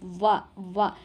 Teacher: ವ ಅನ್ನೋದು ಯಾವ ವರ್ಣ ಅಂತ ನಾವು ಕಂಡುಹಿಡಿಬೇಕಲ್ವಾ ವ ಅಂತ ಅಂದಾಗ ನೋಡಿ ನಮಗೆ ಹಲ್ಲುಗಳಿಗೆ ತುಟಿ ಎರಡು ಟಚ್ ಆಗ್ತಾ ಇದೆ ವ ಹಲ್ಲಿಗೆ ತುಟಿ ಹೋಗಿ ಹಿಂದಕ್ಕೆ ಬಡಿತಾ ಇದೆ ಅಲ್ವಾ ವ ಅಂದಾಗ ಹಾಗಾಗಿ · ಹಲ್ಲಿಗೆ ತುಟಿ ಹೋಗಿ ಹಿಂದಕ್ಕೆ ಬಡಿತಾ ಇದೆ ಅಲ್ವಾ ವ ಅಂದಾಗ ಹಾಗಾಗಿ ಇದು ದಂತ್ಯೋಷ್ಟ್ಯ ಆಗುತ್ತೆ ಆಪ್ಷನ್ ಒಂದು ದಂತ್ಯೋಷ್ಠ ವ